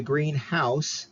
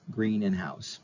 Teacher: if we say Greenhouse separately you'll notice that the green house the accent's on the house more right the stresses on the house uh it's just a house